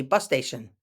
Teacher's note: when we say it quickly bus station it sounds like one word